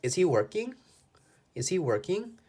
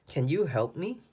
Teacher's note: These questions where the answer is yes or no, our voice goes up.